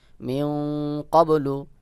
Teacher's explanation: নুন সাকিনের পরে কফ ইকফার হরফ ইকফা গুন্না করতে হবে